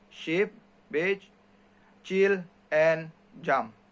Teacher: Postalveolar articulate with the tongue near or touching the back of the alveolar ridge